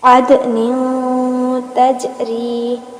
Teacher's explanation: अदन नहीं कहना बल्कि अद और ना भी करना है यानी नून की आवाज हमारी नाक में घूमेगी और यहां पर याद रहे दाल और जीम दोनों साकिन है